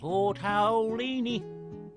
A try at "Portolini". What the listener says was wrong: Just relax your mouth and don't say ow this time.